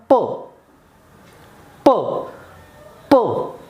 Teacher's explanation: goes out po po so upper lip elderly comes tightly close there is a pressure in the mouth and when we release our lips the air goes out of the mouth forcefully and that is the production of consonant sound po po po